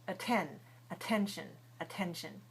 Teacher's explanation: Now, at the beginning of A-T, we don't pronounce that T at the end of the first syllable. We only stress the T at the beginning of the second syllable, which is 10, just like the number 10.